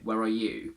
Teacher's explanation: I'm putting the stress on you again to create the opposition between me and you. And in that case, are goes weak.